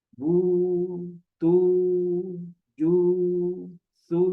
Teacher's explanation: Ketika mengucapkan bu. Jadi pangkal belakang lidah itu terangkat sedikit. Kemudian membulatkan dua bibir. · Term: dhammah